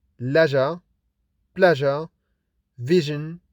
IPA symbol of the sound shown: ʒ